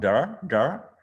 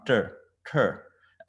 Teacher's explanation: So the words with the dot underneath is a retroflex word, meaning that you have to curl your tongue up. So the D instead of da become dar, and the T instead of this t become ter.